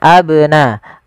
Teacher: Kemudian lafal abnaakum ada huruf ba, ini banyak berharokat sukun dan dia ba salah satu huruf qalqalah, yang dimana dia harus memantul